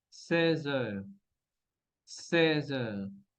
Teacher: Vamos a conectar entonces la Z con el sonido E para decir 16 heures.